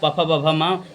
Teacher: निचला ओठ ऊपरे वाले ओठ से मिलता है